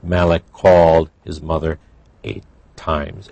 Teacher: we have a k and a c but it's the same sound so it's blended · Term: blending